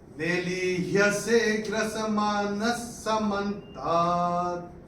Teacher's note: न के बाद विसर्ग के बाद का अक्षर है स, तो विसर्ग का उच्चारण होगा आधा स